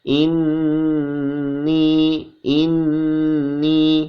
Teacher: dibaca dengung dan ditahan